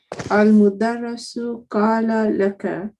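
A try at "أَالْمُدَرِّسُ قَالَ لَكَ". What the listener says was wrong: So what's happened is that, so from al, so instead of saying al-mudarrisu, you make it slightly longer. Al-mudarrisu qala laka instead of al-mudarrisu qala laka. So you slightly elongate it slightly.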